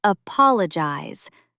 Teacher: Stress on the second syllable, not the first.